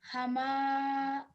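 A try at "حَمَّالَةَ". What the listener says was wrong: So that's meme with tashdid on top. So we have to give emphasis to the meme. So not hama, hamma.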